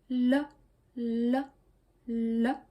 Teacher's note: La vraie prononciation de cette lettre, c'est plutôt le, comme un L français. La langue touche la gencive et on fait le son en faisant tomber la langue vers bas. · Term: le son liquide